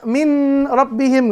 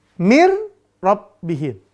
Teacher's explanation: Idgham bila gunnah, maka masuknya bila gunnah tanpa dengung.